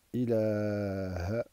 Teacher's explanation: On doit se priver d'allonger le ha final de ilaha.